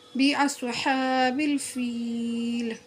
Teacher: باصحاب الفیل، یا کے اوپر کیا ہے سکون اور یا ساکین سے پہلے کیا ہے زیر، تو یہ یا مدہ ہوتی ہے، اس کو 1 الف کے برابر کھینچ کر پڑھنا چاہیے۔